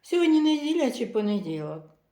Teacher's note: сполучником О не хвилюйтеся Ось і приклади сьогодні неділя чи понеділок інтонація перед сполучником О іде вверх а потім опускається вниз